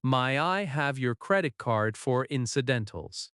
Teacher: In natural speech, May I have often becomes My I have.